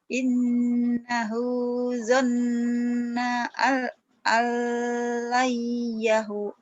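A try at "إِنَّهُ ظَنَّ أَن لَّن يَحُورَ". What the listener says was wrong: Ya, betul, tapi panjang. Innahu zonna alayyahur.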